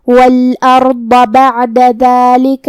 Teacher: کلمت ذالک میں یہاں حرف الدال ہے. دال کی ادائیگی زبان کے سر اور اوپر والے دانتوں کے اندرونی کناروں سے ہے تو ہم دال کو وہیں سے پڑھیں گے.